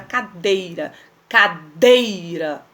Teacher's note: Tá vendo que o D eu falo com muita força e ele não tem acento. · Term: sílaba tônica